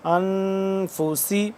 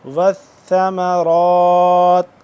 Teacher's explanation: سین کو پڑھیں گے ہم سختی سے سیٹی کی آواز سے، اور اس سا کو پڑھیں گے نرمی سے